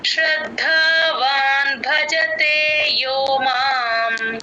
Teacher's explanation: భజతే భ కి మహాప్రాణం ఉంది గమనించండి